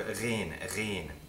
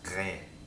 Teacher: The ghain is pronounced by lifting the back of your throat again, but unlike the ayn, you're going to make contact with your soft palate. Ghain. It's almost like a French uvular trill.